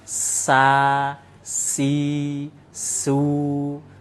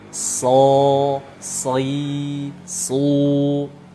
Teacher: Kalau huruf sin pangkal lidahnya datar, nggak naik sama sekali. Sa si su. Sedangkan huruf shad pangkal lidah harus naik.